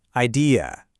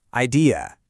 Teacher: In the UK, you'll often hear it with a softer ending, that ear sound, idea. But over in the US, that last syllable gets a little sharper, more of an e sound. Idea. It's a super subtle difference, but it's one of those things that can instantly tell you where a speaker is from.